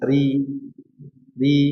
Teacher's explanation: Nah, adapun ketika kasrah ini terjadi rnya tipis.